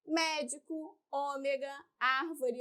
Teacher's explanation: a sílaba tônica é a antepenúltima, ou seja, contada de trás para frente é a antepenúltima sílaba, né? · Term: proparoxítonas